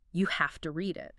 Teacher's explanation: It notes that the speaker emphasizes have to. Like you really have to read it, showing strong recommendation.